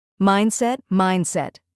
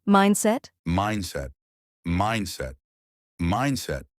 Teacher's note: two syllables, stress on the first part